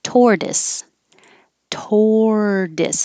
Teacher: this middle t sounds like a d